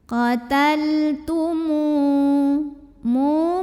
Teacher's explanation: Qataltumu, mu mad tabi'i karena ada waw sukun yang didahului baris dhammah. Maka mim yang berbaris dhammah kita panjangkan 2 harokat.